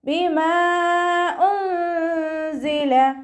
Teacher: മദ്ദക്ഷരത്തിന് ശേഷം അടുത്ത വേർഡിലായിട്ട് ഹംസയും വന്നു. മദ് ജായിസ് മുൻഫസിൽ 2 or 4 കൗണ്ട് വീതം നീട്ടിക്കൊടുക്കുക